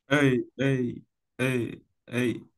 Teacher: como que diga la A con la E juntas, pero tiene que hacerlo rápido, ¿ve? O sea, no es como decir A y E, porque ahí estamos moviendo mucho la boca, es en el mismo momento, Nuevamente.